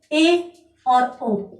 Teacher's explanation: जिन स्वरों के उच्चारण में मुख समृद्ध से तो अधिक परंतु अर्ध विवृत से कम खुलता है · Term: अर्ध समृद्ध स्वर